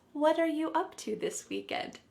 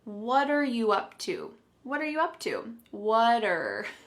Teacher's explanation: the word what and are are creating a spoken contraction